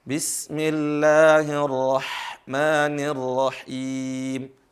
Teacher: hak betul-betul keluar di tenggorokan berasa banget di tenggorokan